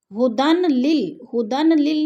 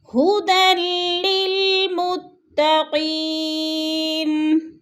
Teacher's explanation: دال کو لام مشدد کے ساتھ ملا کر ہم نے ادغام کرنا ہے، سختی سے جمع کر پڑھنا ہے۔